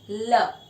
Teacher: ऐसी, ये सपोज दांत है तो यहाँ पे टिप दांत को टच करो, हवा साइड से निकलती है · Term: लैटरल